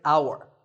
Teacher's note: The first sound is an ow sound, which is a vowel sound